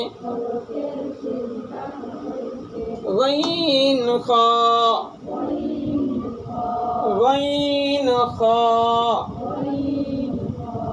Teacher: হলকের শেষ ভাগ হইতে